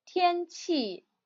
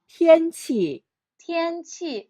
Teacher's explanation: Tian Qi first and fourth tone